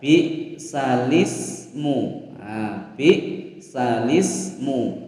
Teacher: Hamzah dan alifnya hilang, tinggal lamnya saja berharokat kasroh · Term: naql